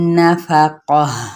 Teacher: جب وقف کیا جاتا ہے تو ہا کی ساؤنڈ میں اس کو بدل دیا جاتا ہے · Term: تائے مربوطہ